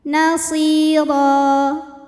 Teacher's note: Huruf ra dibunyikan secara tafkhim karena berbaris di atas, maka dibacanya tebal. Ro jika berhenti hukumnya mad iwad karena ada baris tanwin fathah yang diwaqafkan. Cara bacanya panjang 2 harokat.